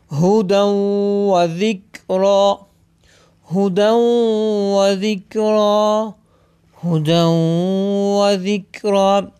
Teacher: अगर आप गौर करें तनवीन के बाद फ़ेयर मालूम में से वाव आ गया है, यहाँ पर इदगाम होगा, यानी गुन्ने के साथ पढ़ेंगे